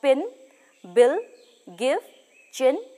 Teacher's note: tongue which is the highest the hinder part of the front position of the lips spread or neutral opening between the jaw is narrow to medium